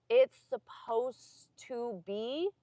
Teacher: There's an ED on the spelling, but you don't hear it in pronunciation.